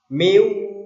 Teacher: nun sukunnya melebur ke huruf wawu dan ditekan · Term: idgham bi gunna